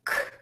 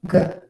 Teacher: the same as the G except for the voicing